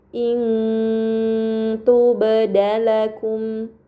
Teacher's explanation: nun sukun dibaca secara samar dengan gunah yang dipanjangkan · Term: ikhfa hakiki